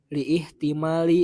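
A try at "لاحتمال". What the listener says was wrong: itu hamzahnya hamzah wasal lihtimali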